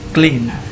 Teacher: Kemudian clean itu simbolnya, kuncinya pada I titik 2 kemudian N, panjang ya, clean. Kemudian ada ini clear, jadi ada sama-sama dan bukan clear tapi clear.